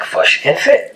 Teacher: the kick-foot vowels are reversed for the words fish and foot to sound like fush and fit